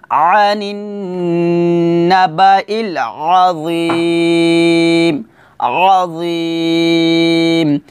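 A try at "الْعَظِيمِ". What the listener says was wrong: আবার কিন্তু এখানে আযীম এভাবে বলা যাবে না, অর্থাৎ আইনের টান দিয়ে বলা যাবে না, আইনে কিন্তু টান হবে না, আইন যেবার আ এটা হরকত, তাড়াতাড়ি বলতে হবে,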